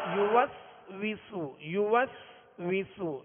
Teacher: یہ سین کو سیٹی کی آواز میں پڑھنا ہے، اس میں سختی ہے، سیٹی کی آواز میں ادا کریں گے